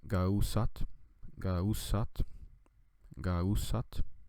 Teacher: But here we see that the ga prefix at the beginning is getting all the stress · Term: stressed version of ga